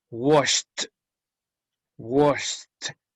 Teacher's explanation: Si usted hace el ejercicio de tocar su garganta, no vibra. Por lo tanto, ese ED va a ser pronunciada T.